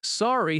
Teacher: Sorry has a gentle falling tone.